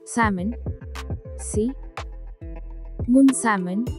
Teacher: l is silent here stress is on see